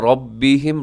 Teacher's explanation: را منہ بھر کے موٹا کر کے پڑھیے گا